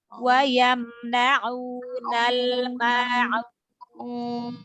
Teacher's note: huruf ain keluar dari tenggorokan bagian tengah.